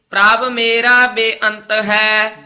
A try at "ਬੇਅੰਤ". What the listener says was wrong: ਬੇਅੰਤ ਐ ਨਹੀਂ ਕਹਿਣਾ, ਬੇਅੰਤ ਇਕੱਠਾ ਹੀ ਬੋਲਣਾ ਹੈ। ਬੇਅੰਤ ਨਹੀਂ, ਬੇਅੰਤ ਤੇ ਸਿਹਾਰੀ ਲੱਗ ਗਈ। ਬੇਅੰਤ ਇਕੱਠਾ ਹੀ।